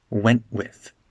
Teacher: we connect the nah and the I together I went with the T disappears it's a glottal stop